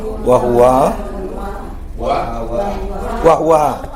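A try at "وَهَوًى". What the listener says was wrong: Wahawan. Jadi wawnya bertanwin. Enggak bertasydid. Wahawan.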